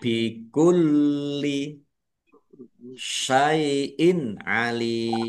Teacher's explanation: bikulli lamnya ada tasdidnya dibaca dobel ya ditekan dan ditahan biar tampak dobelnya bikulliin alim kasrah tanwin bertemu dengan huruf ain bacaan izhar dibaca jelas